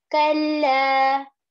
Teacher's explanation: we are going to extend it for about two counts as in two harakah as in one alif kalla like this and then in the word sayalamun Of course, on seen and yeah, there is fatha. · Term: alif madda